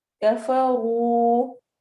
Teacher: را کو ہیوی پڑھیں گے کیونکہ را کے اوپر ضمہ پیش آ رہی ہے